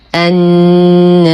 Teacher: نقف على الراء المكسورة بمد عارض للسكون بمقدار 2 4 6 حركات، ونلاحظ أن هذه الكلمة الراء فيها مكسورة وقبلها حرف المد الألف، فهي من ذوات الراء للإمام ورش له فيها تقليل الألف قولا واحدا، فيقرأها النار مع ترقيق الراء وصلا ووقفا